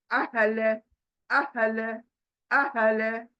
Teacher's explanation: हलक में कहीं से नहीं आएगा, डायरेक्ट सीने से बाहर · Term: गोल हा